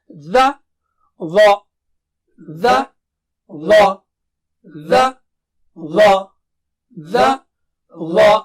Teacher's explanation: ظا بہت موٹا اور اونچا ہے